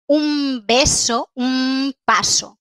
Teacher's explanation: En español no decimos un beso o un paso, decimos un beso, un paso, con M. La pronunciación por asimilación es esta, con M.